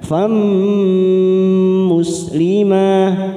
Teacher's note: Fam fathah tanwin bertemu mim masuk. Fam kita tekan 3 ketuk, namanya idgham biguna.